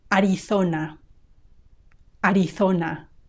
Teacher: In Castilian Spanish, in my accent, we say th when there is a z.